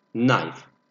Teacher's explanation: We don't pronounce K in the beginning.